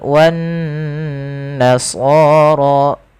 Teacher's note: Kita hukumi dengan bacaan gunnah, kita tahan bacaannya sepanjang 2 harakat.